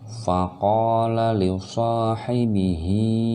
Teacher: fa-nya pendek, qaf panjang, ada alif di sini, mad tabi'i alif. Li-nya pendek, so-nya panjang, ada alif berdiri di sini, mad tabi'i alif juga.